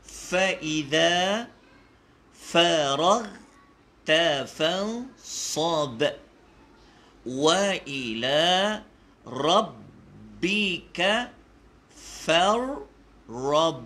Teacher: dia ada qalqalah kat situ, fansab dengan farrab.